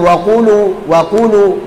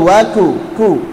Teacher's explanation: Huruf qaf dan kaf kita tahu berdekatan makhrajnya dan sifatnya ada perbedaan, di antaranya adalah kalau qaf itu jahr sedangkan kaf itu hams. Makanya tatkala mengucapkannya, contoh misalkan di sini kita contohkan wa kulu, ini harusnya kaf.